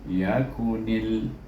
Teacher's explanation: Apa yang kita idghamkan iaitu huruf nun kepada huruf lam yang bertasydid. Jadi bunyinya yakunil. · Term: idgham samsi